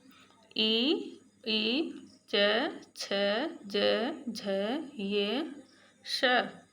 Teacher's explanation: तालु से हो रहा है, यानी जीभ का जो हमारी जीभ है वो हमारे तालु को टच कर रही है।